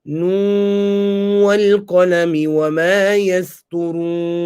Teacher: so doing the idgham of the noon into the waw